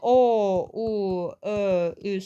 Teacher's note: [Musiqi] Bunlar dodaqlarımızın vəziyyətinə görə olur. Dodaqlananları tələffüz eləyərkən dodaqlarımız büzüşür və qabağa çıxmış olur.